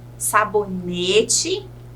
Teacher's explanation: a sílaba tônica é o NE, é a penúltima